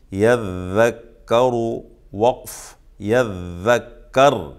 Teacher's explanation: حالت وصل میں جب ملا کے پڑھیں گے تب بھی را کو پر پڑھیں گے، موٹا پڑھیں گے، اس لیے کہ را پر پیش ہے، اور جب وقف کریں گے تب بھی را کو پر پڑھیں گے، اس لیے کہ را ساکن ہے، اس سے پہلے زبر ہے۔